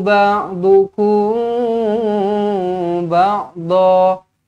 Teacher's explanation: Mim kosong bertemu dengan ba, ikhfa syafawi, dengungkan dua harakat.